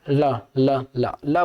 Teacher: अब ल को देखिए, ल बोल के देखिए, जीभ जो है ना, दांत के नीचे वाले हिस्से में, या फिर ल है ना, दांत से जाके टकरा रहा है, ये हो गया हमारा दंत।